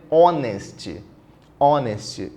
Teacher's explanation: então não fala o h Olha lá se não fala o h o som é de vogal